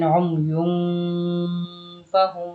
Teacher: এখানে নাকের ভিতর লুকায় গুন্নাটা করবেন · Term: গুন্নাহ